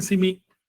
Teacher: los chavos están pronunciando sonidos que en maya deben ser con K, pero lo están pronunciando con S. En vez de decir Kimi, dicen Simi.